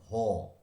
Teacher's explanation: কণ্ঠনালীর মধ্যে শ্বাসবায়ু বাধা পেয়ে যে ব্যঞ্জন উচ্চারিত হচ্ছে তাকে বলছে কণ্ঠ নালীয় ব্যঞ্জন। যেহেতু কণ্ঠনালীর মধ্য থেকে উচ্চারিত হচ্ছে কণ্ঠনালীয় ব্যঞ্জন। · দেখো একদম ভেতর থেকে হচ্ছে, কণ্ঠনালীর মধ্যে থেকে হচ্ছে